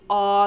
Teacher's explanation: Then we get into our low back vowel, and this one is unrounded. So the ah, the really far back ah, as opposed to the ah, that's forward, ah, ah.